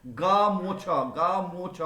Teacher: তাহলে গার ওপর চাপটা দেওয়ার ফলে, শাসাঘাতটা পড়বার ফলে শব্দের মধ্যে যে স্বরধ্বনিটা আছে সেই স্বরধ্বনির উচ্চারণ ক্ষীণ হতে হতে একসময় লোপ পেয়ে যায়। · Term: মধ্য স্বরলোপ